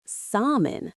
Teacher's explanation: But that L is the biggest trap in this word. In standard English pronunciation, the L is completely silent.